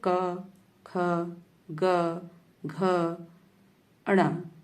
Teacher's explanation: जिन व्यंजनों को बोलते समय हमारी जीभ के जो पिछला वाला भाग है, जीभ का जो पश्च भाग है, उसका जो कोमल तालु है, वहां पर हमारी जीभ का कोमल तालु का स्पर्श होता है। देखिए बोल के देखिए क, ख, ग, घ, अण, माने जो कंठ से आवाज निकलती है क, ख, ग, घ, अण। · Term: कंठ या कोमल तालव्य व्यंजन